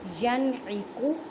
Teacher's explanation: ینعق نون ساکن کے بعد عین حروف ہلکی اظہار کا قاعدہ کریں. اظہار کا مطلب ہے ظاہر کرنا.